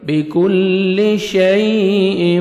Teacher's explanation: یا لین ہے نرمی سے ادا کریں گے